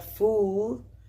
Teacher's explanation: es una vocal medio cerrada central trasera esta se emite redondeando los labios